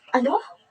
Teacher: Ang tono ng boses ay tumataas bilang pagpapahayag ng hindi pagkakaintindi o paghingi ng pagsasaulo ng sinasabi.